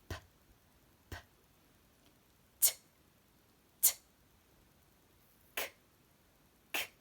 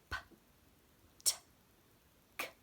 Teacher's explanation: Okay, so now all three of these, P, T, and K, those are actually what we consider to be sounds with no voice, meaning there's no vibration here